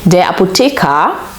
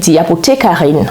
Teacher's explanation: on entend pas le R dans la forme masculine mais on entend bien sûr et très clairement le R dans la forme féminine